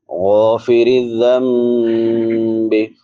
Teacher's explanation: غین حروف مستعلیہ میں سے ہے، اس کو پر پڑھیں گے 7 حروف جو پر پڑھے جاتے ہیں، جن کا مجموعہ غصہ ضغط قض ہے. را باریک ہوگی کیونکہ را کے نیچے زیر ہے